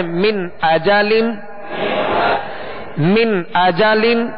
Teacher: جھٹکا بھی نہیں دینا اور غنہ بھی نہیں کرنا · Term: اظہار